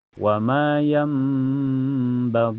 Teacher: Karena ada ya sukun sebelumnya harakat. kasrah gi dibaca panjang dua harakat